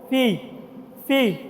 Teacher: উপরের দাতগুলা নিচের নিচের ঠোটের সাথে লাগাইতে হইব । ফি ফি উপরের দাঁতগুো আছে না নিচের ঠোটের সাথে লাগাইবেন।